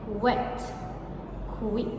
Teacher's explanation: labiovelar approximant. Lips rounded and tongue body raised.